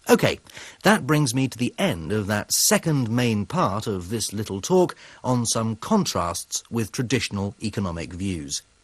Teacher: His intonation falls, the pitch and music of his voice get lower, and he gets quieter before he introduces the next section. His intonation then rises again.